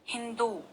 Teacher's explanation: हिंदू जब आप लिखते हैं तो कुछ लोग हिंदू में छोटे ऊ की मात्रा लगा देते हैं और वो गलत हो जाता है, क्योंकि सही उच्चारण है हिंदू। द में जोर पड़ रहा है, द में ज्यादा ऊर्जा खर्च हो रही है